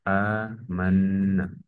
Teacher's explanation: hukumnya adalah mad badal dibaca panjang dua harakat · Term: mat badal